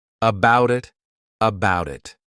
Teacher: I'll actually use a soft D sound, and you'll hear that sound on both sides of the word, and I'll say it as one, about it, about it.